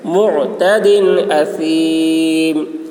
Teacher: دال میں اظہار تنوین کو ظاہر کر کے پڑھیں گے